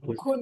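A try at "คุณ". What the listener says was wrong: Kun. That's Again, actually it's an aspirated one. You feel some air.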